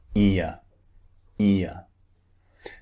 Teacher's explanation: It's two vowels squeezed together. The mouth starts wide and ends in a neutral position.